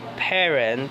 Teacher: sound is produced by closing the lips together and then releasing them to create burst of air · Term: p sound